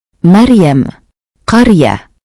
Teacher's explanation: Alasan fathah sebelum ra memberikan bunyi yang kuat sehingga ra dibaca tebal. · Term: tafhim